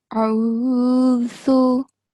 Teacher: This is Dhal, right? So it has a thin and hissing sound. A'udhu. It's different from Za.